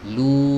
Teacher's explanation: Tapi kalau dia putus-putus suaranya ya, la ja'ilu, berarti ini masih masuk ke sini ya, ke rongga hidung, dan itu salah ya, keliru. Jadi huruf lam ini ketika dibaca panjang lu tidak boleh masuk ke hidung ya.